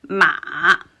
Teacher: So my voice first dropped a bit and then rose a little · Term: third tone